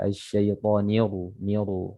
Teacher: ra-nya ini dibaca tebal, ya, tetapi jangan dimonyongkan bibir